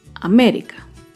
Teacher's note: América se acentúa en la antepenúltima sílaba.